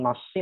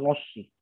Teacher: Ya nasi, nonnya tipis, bukan nosi.